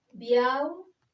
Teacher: La fuerza de voz recae sobre la última sílaba, ral. Por tanto, es una palabra aguda.